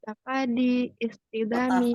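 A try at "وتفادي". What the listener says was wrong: watafadi watafada. Itu walaupun majrur dia tetap itu dia dibaca fathah karena dia apa namanya mu'tal akhir ya, bukan watafadi, nggak bisa tafadi. Tafada ya tafada tafada. Jadi masdarnya sama dengan fiil madinya.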